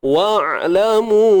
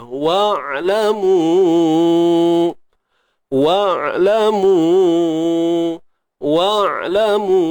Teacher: Huruf ain mati. Sempit tengah kerongkong kita.